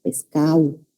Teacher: El costeño tiene la característica de elidir la D, dejar de utilizarla, de pronunciarla. Pescado, que tiene una D, dicen en el habla rápida pescado, ¿no?